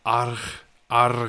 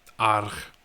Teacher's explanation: You've got to roll the R and then throw the G in there.